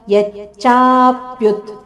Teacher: ಇಲ್ಲಿ ಯದ ಮೇಲೆ ಆಘಾತ, ಚದ ಮೇಲೆ ಆಘಾತ, ಹಾಗೂ ಮುಂದೆ ಪ್ಯು ಮೇಲೆ ಸಹ ಆಘಾತ ಇದೆ